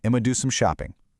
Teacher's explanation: in the ultra-casual, highly contracted flow you'd hear hanging out with friends, I'm gonna shrinks even further to just Imma.